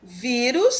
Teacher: Vírus, terminou em us, a sílaba tônica é vi, é uma paroxítona, penúltima sílaba mais forte